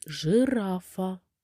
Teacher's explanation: в слові жирафа наголошений другий склад ра